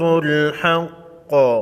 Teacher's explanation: قاف کو ساکن کریں گے آخری حرف سے وقف کی صورت میں